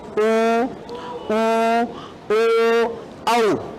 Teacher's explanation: वे स्वर जिनके उच्चारण में होठों की आकृति वृत्त के समान गोल हो जाती है, वृत्ताकार स्वर कहलाते हैं।